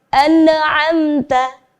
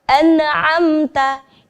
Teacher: terjadi kesalahan ketika ada nun sukun bertemu ain, itu ada bunyi pantulan pada huruf nun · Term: bacaan tawallud